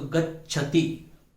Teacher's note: स्पष्ट रूप से हमें आधा च और छ इन दोनों की ध्वनि सुनाई देनी चाहिए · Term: संयुक्त वर्ण